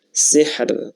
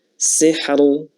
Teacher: Sihr ya, ra-nya tipis. Sihr, bukan sihru ya, tapi sihr tipis.